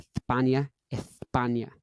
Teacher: In Spain, they go th instead of s. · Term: th sound